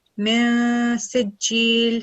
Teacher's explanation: So we are going to follow the Ikhfa rule. Min Sijil, produce the slight nasal sound and prolong it for 2 seconds